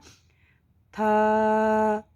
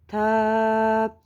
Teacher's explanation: ان کے مسوڑوں اور جڑوں کے ساتھ جب سختی سے لگ جائے زبان کا سرا یعنی نوک، تو اس سے تا ادا ہوتا ہے. ادا کریں گے ذرا تھا، دیکھیں زبان کی نوک وہاں لگ رہی ہے.